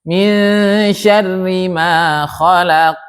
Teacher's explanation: karena qf itu huruf apa? Huruf tebal. Maka qalqalahnya pun ikut tebal.